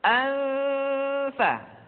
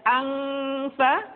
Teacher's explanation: Jadi ketika kita mengucapkan nun mati dan tanwin, posisi makhraj sudah menutupi atau masuk pada huruf yang sedang kita hadapi. Contohnya, ketika nun mati tanwin bertemu dengan huruf fa, maka posisi makhraj sudah berada pada huruf fa. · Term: ikhfa